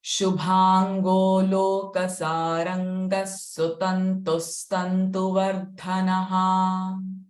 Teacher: Visarga sound will be sa in first line.